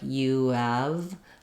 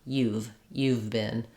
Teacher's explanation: they just take have and they say it more quickly but you really want to drop the H and the a of have and just use V